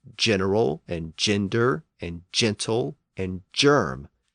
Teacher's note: In those situations, the hard G sound, G, slid forward in the mouth and became a soft G or J sound